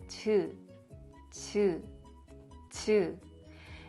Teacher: Compared to 'j' sound, the Korean 'ㅈ' sound We don't vibrate our vocal cords. We just pronounce it softly.